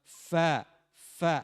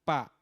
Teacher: ya saya ingatkan lagi huruf Fa bukan pertemuan dua bibir tetapi gigi seri atas ujungnya Digigit disentuhkan dengan bibir dalam bagian bawah